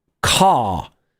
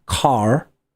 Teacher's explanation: It became prestigious in British English to drop the R sound.